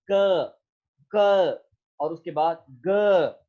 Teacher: जो आपका back of द tongue है वो बुनियादी तौर पर मूव करता है आपके वेलर की तरफ और क और उसके बाद ग, तो ये दोनों साउंड जो है वो प्रोड्यूस होती हैं.